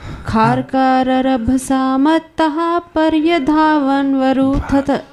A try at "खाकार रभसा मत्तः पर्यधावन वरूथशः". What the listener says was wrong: कितने खा आ गए इसमें ना। खाकार रभसा मत्तः पर्यधावन वरूथशः,